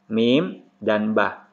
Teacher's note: Huruf contohnya ini ba dan mim atau mim dan ba berasal dari makhraj kedua bibir. Jadi huruf ini semuanya keluar dari kedua bibir, cuman sifatnya berbeda.